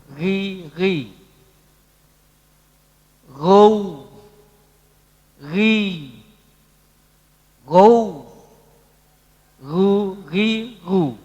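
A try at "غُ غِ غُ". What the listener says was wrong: Ya, nggak boleh terputus. Balik lagi coba. Yang tasdid tidak boleh terputus, ya.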